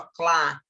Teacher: Quando eu fiz o clá, eu pronunciei o C cá atrás e o L cá na frente, ó, clá. Então, eu pronunciei o C e o L.